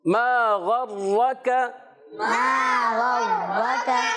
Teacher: ما حرف مدہ ہے، الف مدہ ہے، ایک الف کھینچ کر ادا کریں گے ۔ غین کی ادائیگی حلق کے اوپر والے حصے سے، ایک